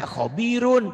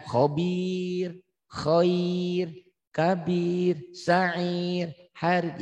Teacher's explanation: Jadi pertanyaannya kalau dibaca khobirun tetap tebal. Tapi kalau dihentikan khobir, khair, kabir, sa'ir, harid jadi tipis.